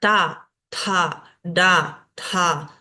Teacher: estos sonidos se pronuncian doblando el ápice de la lengua hacia el y llevándola hacia el paladar hacia el paladar superior · son sonidos que los tengo que pronunciar con la lengua hacia el paladar, sonidos cerebrales